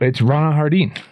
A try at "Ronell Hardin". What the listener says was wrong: No, you made it French. That's actually pretty cool, but it's just Ronell Hardin. Like James Harden. Yeah, with the I-N, though, not the E-N.